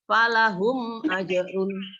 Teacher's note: Ini dibaca syafawi, dibaca jelas karena ada huruf mim sukun bertemu dengan huruf alif.